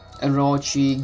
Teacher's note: The second syllable is stressed.